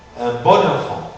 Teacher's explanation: la voyelle on se dénasalise devant les voyelles pour les cas de bon. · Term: dénasalisation